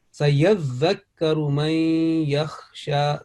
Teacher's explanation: there is a double shadda. Sayyadhakkaru, dhal first, on full stress on dhal, and then kaf